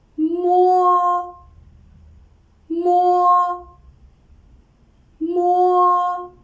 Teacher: liberal nasal sound when we pronounce it leaves forms a closure the air stream passes through the nasal cavity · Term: unaspirated bilabial nasal sound